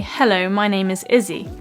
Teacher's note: you say hello my name is Izzy as you can see my mouth closes down as I go through the o sound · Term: diphthong